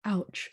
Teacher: ouch the letter o of ouch before we get there you your throat has to close down and open up before you can say ouch so you feel it closing down and opening up it is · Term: glottal stop